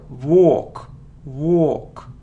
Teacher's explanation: it's a long sound or or without L